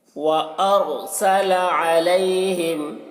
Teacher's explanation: आइन को हलक से अदा कर रहे हैं